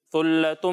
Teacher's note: جب ہم سا کی ادائیگی کریں گے تو اس میں سیٹی کی آواز نہیں آئے گی